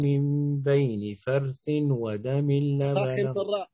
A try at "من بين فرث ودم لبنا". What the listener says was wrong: فخم الراء الساكن مفتوح ما قبلها، من بين فر